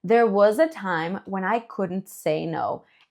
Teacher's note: So, there was a time if you have this s, this s in was sounds a little bit like a z